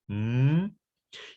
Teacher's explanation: You could close the flow of air using the same places of articulation for the plosives, right? So you could close the flow of air through the mouth using your lips, but letting the air escape through the nose.